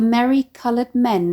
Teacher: the euphonic nasal alliteration of “merry” and “men”